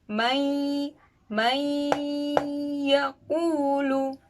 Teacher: Huruf ya termasuk idgham bi gunnah. Jadi membacanya didengungkan. Kalau kata orang Jawa sih bindeng. Jadi agak masuk ke hidung. Mayakulu, begitu, didengungkan. · Mayakulu, begitu, didengungkan. Dileburkan antara huruf nun dan huruf ya, ini dileburkan menjadi satu. Jadi bunyinya ikut huruf kedua. Jadi huruf nun ini tidak menjadi sifat hurufnya sendiri, nun sukun, tetapi dia mengikuti sifat ya.